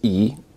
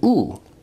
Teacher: E is a high vowel, but it's also a front vowel, while Oo is a back vowel